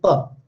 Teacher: The meaning of p is bilabial, the meaning of p is stop or plosive, and meaning of p is voiceless.